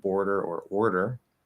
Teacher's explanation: you have to go from the er into the tap back into the er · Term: transposition